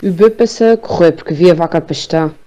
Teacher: uma característica muito típica do sotaque açoriano, que são as vogais mais fechadas. Muito fechadas mesmo.